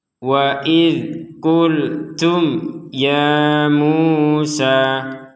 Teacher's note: Huruf dzal sukun ini tidak boleh kita pantulkan, sehingga kita tidak boleh membacanya wa id, tidak ada pantulan sama sekali.